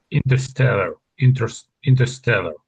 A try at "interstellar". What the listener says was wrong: Yeah. That's pretty good.